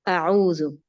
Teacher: او عین الگ ہے، حمزہ الگ ہے، دونوں کا مخرج بھی الگ ہے